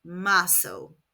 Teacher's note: In Latin American Spanish ‘z’ is pronounced ‘s’